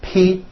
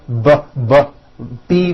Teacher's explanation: the only difference is my vocal cords are either vibrating or they're not vibrating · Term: paired consonants